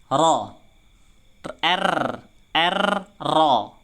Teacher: Ujung lidah dinaikkan ke langit-langit dan ditakrirkan, digetarkan. Yang kedua, pangkal lidah itu dinaikkan juga ke langit-langit agar supaya menebal. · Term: ro tafkhim